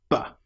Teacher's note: The sound B is created with your lips fully together, not half together, not V, but B. And that sound is a clear B popping sound.